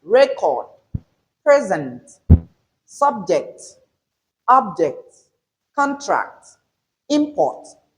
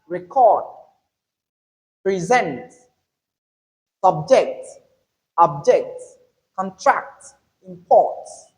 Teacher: the words we have under noun have that stressed on the first syllable whereas the ones we have under verbs have that stressed on the second syllable. · These are all nouns, naming words, and the stress falls on the first syllable of each of these words. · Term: stress pattern